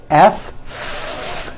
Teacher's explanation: the f sound where you're biting down on your lower lip is that a voiced sound or an unvoiced sound it's unvoiced